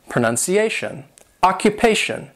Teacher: T-I-O-N is pronounced shun